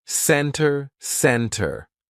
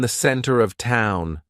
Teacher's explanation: Usually, if the T comes after an N, we drop that T and we do not pronounce it. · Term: silent T